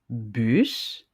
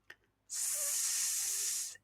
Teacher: Vous mettez votre main sur votre gorge lorsque vous prononcez le son S, S, et observez ce qui se passe au niveau de votre gorge. Vous remarquez que vous n'avez pas de vibration au niveau de la gorge. Par contre, vous entendez un sifflement qui est le S.